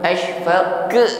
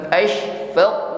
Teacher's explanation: Nampak ya, lebih jelas tekanan nafasnya atau tekanan udaranya, bukan sekedar desis yang keluar di ujung lidah, bukan bukan ya, lebih menyebar anginnya. Pantulan huruf qa menebal, naik ke langit-langit mulut.